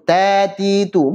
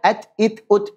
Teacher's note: Dia punya sifat syiddah dan juga hamas. Ada hamasnya.